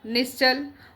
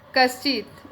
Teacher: दिया है नी प्लस छल ठीक है यह विसर्ग आ गया विसर्ग के बाद क्या आ रहा है छ आ रहा है तो तालव्य स में बदल जाएगा विसर्ग